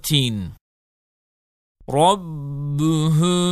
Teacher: sakin mimden sonra ba harfi gelirse dudak ihfası olur ve gunneli okunur